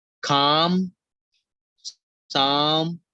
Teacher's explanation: ah sound is for the longer duration